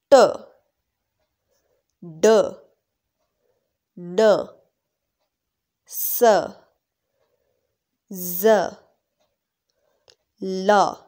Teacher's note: these are the sounds which are produced when our tongue is touching the alveolar ridge. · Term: alveolar sound